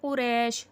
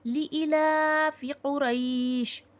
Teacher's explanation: اب جس کو تجوید نہیں پتا وہ لوگ اسے کیسا پڑھتے ہیں؟ قریش، را یا زبر رے پڑھ دیتے ہیں، مجہول کر دیتے ہیں، مطلب لین کا ساؤنڈ نہیں لیتے ہیں۔